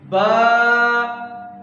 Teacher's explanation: میم، یہ ادا ہوتا ہے جہاں سے ہمارا منہ شروع ہو رہا ہے، ہونٹوں کے باہر سے، میم خشکی والے حصے سے، با ہونٹوں کے تری والے حصے سے اندر سے